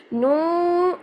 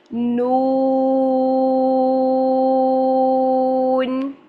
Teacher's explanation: یہ جو واو مدہ ہے اس کی آواز ناک میں نہیں جانی چاہیے. نو، یہ نو کر کے لمبا نہیں کرنا، نو لمبا ہونا چاہیے آپ کا.